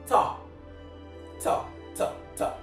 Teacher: the T sound, ta, which is the voiceless alveolar plosive